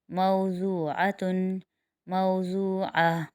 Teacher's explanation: यहाँ पर वावलीन बन रहा है, इसको जल्दी से और नरमी से उठाएंगे